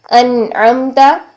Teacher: नून साकिन के बाद आईन आ रहा है जो हरूफ हल्की में से है यह वस्त हल्क से अदा होता है ठीक तो यहां पर हम नून की आवाज को जाहिर करेंगे · تو وہ کیا ہے، جیسے یہاں پر دیکھیے انعمت، عین آ رہا ہے، نون ساکن کے بعد عین آ رہا ہے جو کہ حروف حلقی میں سے ہے، یہ وسط حلق سے ادا ہوتا ہے، ٹھیک. تو یہاں پر ہم نون کی آواز کو ظاہر کریں گے، کوئی اس میں ہم چھپائیں گے نہیں، مرج نہیں کریں گے، چینج نہیں کریں گے، کچھ نہیں کریں گے، بس ہم ظاہر کر دیں گے آواز کو.